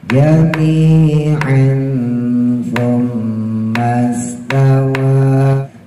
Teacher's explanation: Sa-nya ujung lidah gigit, keluarin, tempelin ke gigi atas.